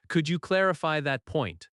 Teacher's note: Stress clarify and point.